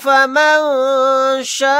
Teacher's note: यहाँ पर नून साकिन के बाद शीन आ गया, यहाँ पर इख्फ़ा का कायदा होगा।